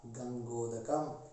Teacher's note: कंठ और ओष्ठ ओकार का उच्चारण स्थान है